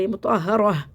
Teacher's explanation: وقفی صورت میں مطہرہ ہو جاتا ہے، یہ مطہرہ، ٹھیک ہے. یہ ہا کو سینے سے نکال کے پڑھتے